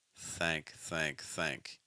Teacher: Just very light contact with the tip of our tongue and our top front tooth. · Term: th sound